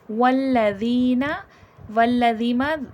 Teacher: ذال یا زیر زی نرمی سے ادا کیا جائے گا، اور یا مدہ کھینچ کے پڑھا جائے گا۔